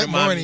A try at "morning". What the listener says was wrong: There's no R in there,